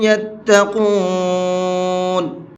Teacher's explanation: قاف کو پر کر کے پڑھیں گے